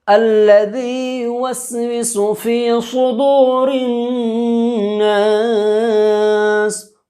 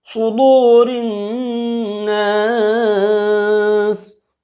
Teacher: الذي یا مدہ، الذي يوسوس في صدور الناس. صاد بحروف استعلا ہے لہذا پر کر کے پڑھیں گے، استعلا منہ بھر کے پڑھنا ہے